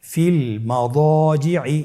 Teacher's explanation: এখানে যেহেতু মোটা হরফ আলিফ হরফ রয়েছে তাহলে আলিফটিকে মোটা করে পড়তে হবে